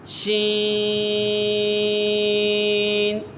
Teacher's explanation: اس کا مخرج ہے زبان کے درمیان اور تالو کے درمیان سے ادا ہوتا ہے۔ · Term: حروف شجریہ